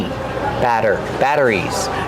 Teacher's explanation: We see the double T making a fast D sound.